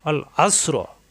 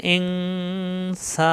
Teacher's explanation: সদ হলো মোটা আর এখানে সিন হলো শক্ত